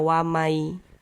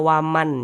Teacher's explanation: bunyi nun sukunnya ini kita masukkan ke huruf ya. Melebur ke huruf ya. Kita baca wamai.